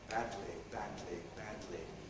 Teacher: Tongue tip, tongue sides, sealing off the flow of air all the way around. And then we keep the tongue tip in place lowering the side rim or rims of the tongue so the air can stream out over the side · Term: lateral release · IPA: [ˈbædli]